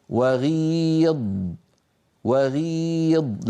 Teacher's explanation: لاحظوا بأن صوت الغين واستعلاء وتفخيمها ضعيف